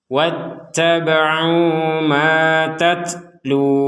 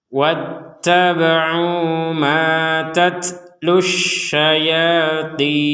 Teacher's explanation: ketika kata tatlu ini kita lanjutkan kepada kata berikutnya, maka dua harokatnya menjadi hilang dan tidak ada panjang sama sekali